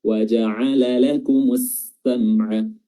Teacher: lamnya enggak dibaca lagi tapi langsung masuk ke huruf sin. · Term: alif lam syamsiyah